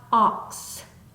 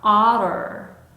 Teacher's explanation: 단모음의 소리는 입을 길게 열고 입 앞에서 나는 소리가 아니라 목구멍에서부터 하고 올라오는 소리면 좋겠습니다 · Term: 단모음 어우의 소리